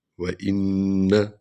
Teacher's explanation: یہاں آپ نے ٹھہرنا ہے، نون غنہ کرنا ہے. شد والا حرف 2 بار پڑھا جاتا ہے ویسے بھی.